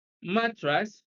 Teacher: mattress stress is on the first syllable